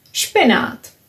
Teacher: We read it as špenát. Nothing happening here because p and sh are both voiceless.